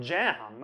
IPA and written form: dʒæm (jam)